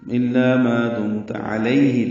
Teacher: ہا اقصی حلق سے ادا کریں گے، معروف طریقے سے جلدی ادا کریں گے